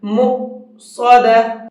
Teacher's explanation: یہ حمزہ ساکن ہے اور حمزہ ساکن کو جھٹکے کے ساتھ میں پڑھا جاتا ہے، اس لیے اس کو جھٹکے کے ساتھ میں پڑھیں گے۔